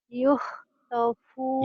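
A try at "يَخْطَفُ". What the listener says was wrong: yah bukan yuh atuh yahtofu. Yakhtafu absarahum.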